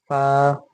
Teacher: होंठ का नर्म हिस्सा यानी गीला हिस्सा और ऊपर के दांत